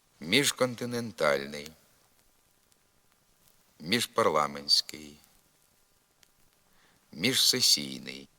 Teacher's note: вправа на вимову дзвінкого ж у префіксі і прийменнику між